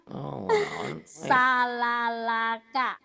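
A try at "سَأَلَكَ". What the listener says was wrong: Salah, ini alif.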